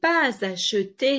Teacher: So here we have again the link, the S to the A.